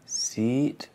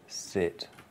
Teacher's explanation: it's a different sound, and it's single and double length. The first is double, and the second is single.